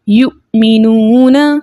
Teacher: ساکن حمزہ کی آواز اس کے مخرج میں رک جاتی ہے جھٹکے کے ساتھ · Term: حمزہ ساکن